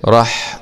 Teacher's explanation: حاء سكون مع الهمس لأن الحاء من حروف الهمس